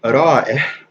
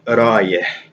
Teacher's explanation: the I, with the Hamza, turns into just a straight up ya.